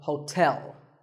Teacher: there are two syllables ho and tell like the English word tell as in tell me the stress is on the second syllable